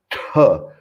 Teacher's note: é o T cerebral com Mahaprana